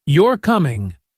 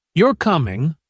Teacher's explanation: a question like you're coming rises at the end while a statement like you're coming falls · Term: intonation patterns